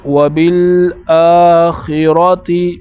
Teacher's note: خا کو پر پڑھنا ہے یعنی موٹا کر کے، اور را کو بھی اسی طرح موٹا کر کے پڑھنا ہے · اس کے بعد وبالآخرۃ، با کو لام کے ساتھ ملایا اور حمزہ کے اوپر کڑا ہے، تو کڑے کی مقدار یہ ہے کہ ایک الف کی مقدار اس کو اوپر کھینچنا ہے